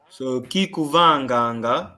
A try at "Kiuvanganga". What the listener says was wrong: No. There's no K. Just you.